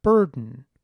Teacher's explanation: a word like “burden”, where the stressed rhotic vowel is in the first syllable